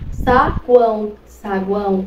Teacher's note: nos tritongos nasais o ar passa pela boca e também pelo nariz